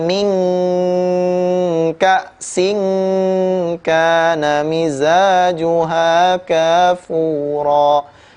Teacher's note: Tapi ya dengungnya sesuai dengan makhrajnya. Karena makhraj huruf kaf itu paling dalam dari huruf lidah, maka dengungnya lebih tebal terasa ya.